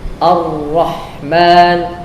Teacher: Tetapi yang benar, di tengah lidah itu membentuk cekungan untuk masuknya suara yang sempit sehingga bunyilah takrir yang dibenarkan